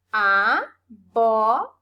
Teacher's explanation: o bó é a sílaba mais forte, é a antepenúltima sílaba. Então, eu já sei que abóbora é uma palavra proparoxítona, tá?